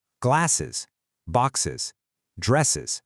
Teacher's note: Notice how you have to add a whole extra beat, a completely separate syllable to say them correctly. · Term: extra is sound